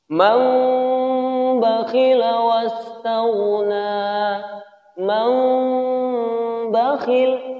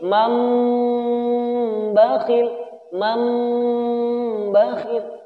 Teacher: Dan ulama yang lain mengatakan suara mimnya ini sempurna karena dua bibir rapat. Rapat dengan sempurna tetapi tanpa menekan terlalu kuat, tanpa menekan dengan kuat. · Kalau gunnah mesti ditahan 2 harokat. Jadi ketika nun sukun atau tanwin bertemu dengan huruf ba, Ini suaranya berubah menjadi huruf mim disertai dengan gunnah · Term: iklab, hukum iklab